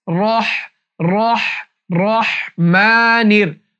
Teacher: এরপর রহ যখন বলবেন তখন রটা মোটা করতে হবে